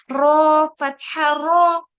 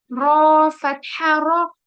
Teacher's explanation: रॉ में हमारा हल्का सा एक सिंगल वाइब्रेशन होना चाहिए। रॉ फतहा रॉ, इतना ज्यादा नहीं कि ऐसा भी नहीं, इतना वो भी नहीं कि हमें रॉ को वाव में कन्वर्ट कर दें, ठीक है।